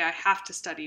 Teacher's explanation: What kind of assimilation is that? Well, it's a V to an F. That's voicing assimilation. It's becoming voiceless because of this T.